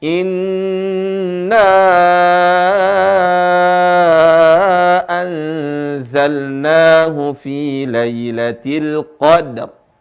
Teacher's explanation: Inna, nanya panjang. Lebih dari 2 harokat. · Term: mad far'i